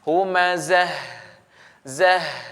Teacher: jika kita wakafkan di sini, nah, ta ini yang bulat ini, maka suaranya keluarnya jadi huruf ha. Dan huruf ha ini dia juga memiliki sifat rakhawah, maka dialirkan. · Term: ta marbuthah